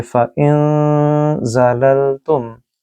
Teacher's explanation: نون ساکن کے بعد زا ہے جو کہ حروف اخفا میں آتا ہے، اس لحاظ سے اس نون کو بھی غنہ کے ساتھ پڑھیں گے